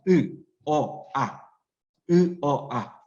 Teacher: 입 전체의 모양에 비해서 아는 혀가 아래에 있지. 그래서 얘를 아 고모음, 중모음, 저모음 혀의 높낮이에 따라서.